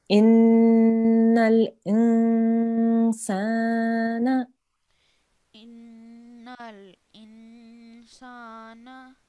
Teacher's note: So we have to hold that and we have to make a soft nasal sound for 2 seconds